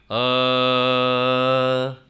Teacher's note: ಪ್ಲುತ ಅಂದರೆ 3 ಮಾತ್ರ ಇದು, ಅ ಅಂತ. ಇದು ನಾವು ವಿಶೇಷವಾಗಿ ವೇದದಲ್ಲಿ ನೋಡ್ತೇವೆ.